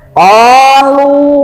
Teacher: Kenapa lu dipanjangkan? Sebab ada waw mati sebelum baris domah kan? Nah, panjang 2 harokat.